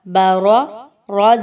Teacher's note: اب اس میں دیکھیے را دو جگہ پر آئی ہے اور دونوں پر زبر موجود ہے، یاد رکھیے را پر جب بھی زبر ہوگی ہم اس را کو موٹا اور پر پڑھیں گے، موٹا کر کے پڑھیں گے۔